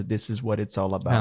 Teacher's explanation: every single word will connect to the next because it's like uh consonant and vowel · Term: connected